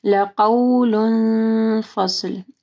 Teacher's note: لقول فصل، لقول نہیں پڑھنا، قاف واو ساکن سے پہلے قاف کے اوپر زبر ہے، مد لین آ رہی ہے، اور قول تنوین ہے، اس کے بعد فا جو ہے اخفا حروف میں سے ہے تو یہاں پہ اخفا غنہ ہوگا۔ فصل، پھر فا کو نرم پڑھنا ہے، صاد جو ہے اس کو سین نہیں پڑھنا۔